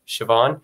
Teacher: the slender s again is the kind of sure sound